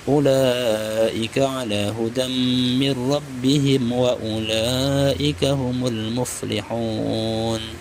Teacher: Mir rabbihim wa mim mati bertemu waw, hukumnya idgham syafawi juga, tidak direndam dan tidak didengungkan.